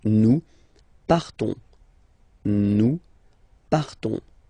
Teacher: So the same phonetical form for these persons, but then obviously and of course for nous it will be different. So classic ending ONS, you don't pronounce the S, you just have this on sound nasal